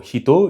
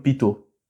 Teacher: le son he était toujours prononcé pe là où aujourd'hui on met un handakuteng pour transformer le he en pe.